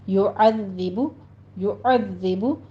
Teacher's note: وَيُعَذِّبُ میں ذال کو آپ نے سیٹی کی آواز نہیں نکالنی، نرمی سے ادا کرتے ہوئے تشدید ہے اس پر سختی کیجیے۔